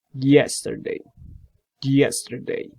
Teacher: The consonant will be ya, ya. That's the manner of articulation is approximate, and you have to use just your tongue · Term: palatal